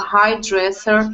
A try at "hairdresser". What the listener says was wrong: And this one, we say instead of hire, we say hairdresser. So hairdresser.